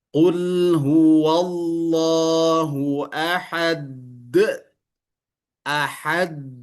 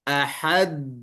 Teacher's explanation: jadi dia ada seolah-olah semacam jeda. Nempel dulu dia, baru terpantul.